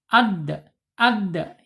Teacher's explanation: Ujung lidah menyentuh pangkal gigi seri. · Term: Dal